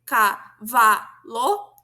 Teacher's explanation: a sílaba tônica é vá, a que vem antes é cá, seria a pré-tônica, e o lo o que vem depois seria a pós-tônica